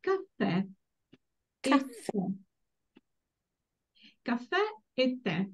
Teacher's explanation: Caffè e tè, the accent falls on the last vowel. So the last vowel, whenever we see the accent at the end, is pronounced very briefly.